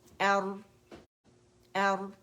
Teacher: اس میں توسط ہے، پارشلی آواز چلتی ہے